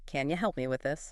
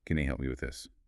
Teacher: And the breakdown can you often reduces to can you and help me links together sometimes sounding almost like help me. The P sound might be very light or blend right into the M.